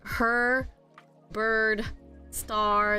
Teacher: that's what we call them R colored vowels so it makes that R sound cuz it's influenced by the R so it would be 15 if we counted the r colored